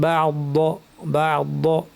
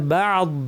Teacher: হ্যাঁ, আমাকে বলতে হয় বা'দ, আওয়াজটা আস্তে আস্তে মিলিয়ে যাবে